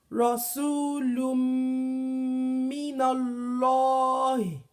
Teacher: There's no tanwin there. and we now hold a little bit on, we stay a little bit on pronouncing the meme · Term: idgham